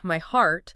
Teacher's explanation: Heart has a very open drop jaw uh sound. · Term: open drop jaw sound